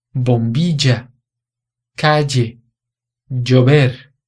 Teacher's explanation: No México e em alguns países da América Central, a pronúncia do L duplo seria como DJ em português.